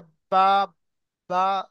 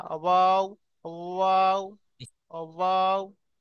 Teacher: তো এখানে দেখেন ওয়াও এর মাখরাজ দুই ঠোঁট না মিলিয়ে মাঝখান উচ্চারিত হয় ওয়াও। তো এটা- বা উচ্চারণের সময় দুটো ঠোঁট মিলে যাচ্ছে, বা, বা, দুটো ঠোঁট মিলে যাচ্ছে। কিন্তু ওয়াও উচ্চারণের সময় কাছাকাছি আসবে, মিলবে না।